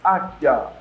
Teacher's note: O U não é pronunciado. O I também sai fraquinho. Águia. O A aparece, ele forma a sílaba, mas as outras não têm um som forte.